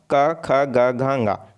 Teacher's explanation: जीभ जो है वो हमारे कंठ से टकराता है, इसलिए कंठव्य कहा जाता है